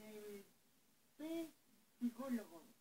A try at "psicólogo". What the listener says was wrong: No, señor. La P no se pronuncia.